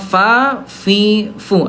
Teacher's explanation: Ya, fa, fi, fu, ada udara. Dari segi suara dia rokhwah lemah, mengalir, mengalir gitu ya. · dari segi udara dia punya sifat huruf namanya al-hams